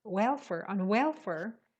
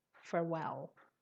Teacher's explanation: welfare, the stress is on the first syllable, welfare, and there's only one L. But farewell, the stress is on the second syllable